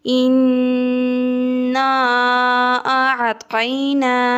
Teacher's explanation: نون کو 1 الف کے برابر لمبا کرنا ہے، اس کے اوپر کھڑی زبر ہے۔